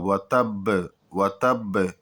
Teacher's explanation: وتب، یہاں پر ایک چیز اور دھیان دینی ہے کہ یہاں پر جب وقف کر رہے ہیں تو 2 چیز آخر میں ہے، ایک تو با جو کہ حروف قلقلہ میں سے ہے، جو کہ یہاں پر قلقلہ کیا جائے گا، یعنی پلٹ کر کے آواز واپس آئے گی، اور دوسرے کی با پر تشدید بھی ہے، تو اس کو جو ہے اسی طریقے پر جو ہے زور سے جو ہے اس پر رکا جائے گا۔